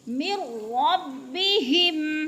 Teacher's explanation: अन्नहुल हक़्क़ु मिर रब्बिहिम, मीम को रा के साथ मिला के पढ़ेंगे, नून साकिन के बाद अगर रा मुशद्दद आ जाए तो इधर इदगाम होगा, तो इसलिए मीम को रा के साथ मिला के पढ़ेंगे, नून को नहीं पढ़ेंगे।